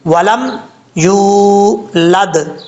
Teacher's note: دال میں دال ساکن ہے تو اس میں قلقلہ ہوگا